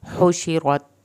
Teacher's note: हा को हल्क से पढ़ेंगे, रॉ को पुर करके पढ़ेंगे